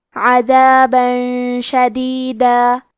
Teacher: کلمت عذابن کے آخری میں با پہ تنوین زبر ہے، پھر حرف شین آتا ہے کلمت شدیدہ. شین حروف الاخفاء میں سے ہے تو ہم یہ حکم کو غنہ کے ساتھ ادا کریں گے